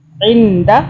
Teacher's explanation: دال جو ہے یہ اخفا کا حرف ہے، اس لیے ہم نون ساکن کے اوپر اخفا کریں گے، نون کو ہم چھپائیں گے 2 سے 3 سیکنڈ کے لیے